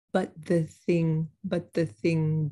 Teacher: i have two th's i'm not really gonna move my tongue very much i'll keep it right there ready to go between the first one and the second one